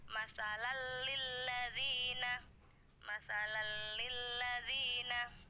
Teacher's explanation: Cara bacanya jelas. Ada penekanan tapi penekanannya tidak lama. Jadi seperti bertemu dengan lam tasydid. Masalal lilladzina, karena penekanannya yang tidak lama itu kami menyebutkannya jelas ya. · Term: idgham bila gunnah